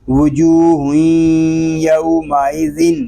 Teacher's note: تنوین میں ادغام یار معلوم اس لیے ہو رہا ہے کہ تنوین کے بعد رفع یار معلوم میں سے یا آ گیا ہے. ادغام ناقص اس لیے ہو رہا ہے کہ تنوین کے نون ساکن کی جو صفت ہے وہ باقی ہے